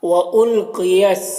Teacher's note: قاف یہ حروف مستعلیہ میں سے ہے، اسے پر پڑھنا ہے